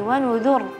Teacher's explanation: Walaupun ra-nya tebal di situ benar, tapi nun dalnya tipis ya